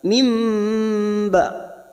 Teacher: namanya bacaan iqlab, membalik seperti bertemu mim, tetapi kita siap membunyikan huruf ba. Mim ba ditahan selama 3 harakat, 2 atau 3 harakat.